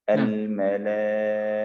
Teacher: ketika berhenti di dalam ta marbutoh, tolong diperjelas bahwa ta marbutohnya berubah menjadi ha